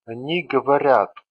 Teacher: In they form, sound a follows soft consonant sound r, which explains why soft vowel letter ya stands for sound a.